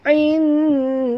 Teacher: nun mati bertemu dal, ikhfa hakiki, sorok dan dengung dekat sini. Jadi lidah kita berada di tengah-tengah rongga mulut.